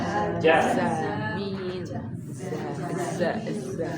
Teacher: Kalau ja dari tengah lidah. Jadi huruf jim ini tengah lidah.